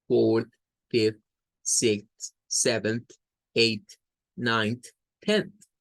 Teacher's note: Decíamos en la última clase que esto es como agarrar los números que ya conocemos y a todos agregarles el sonido TH sin vibración o unvoiced sound for TH, that is, la lengua un poco afuera en medio de los dientes y solo soplamos hacia afuera. Es un sonido muy suave, casi imperceptible.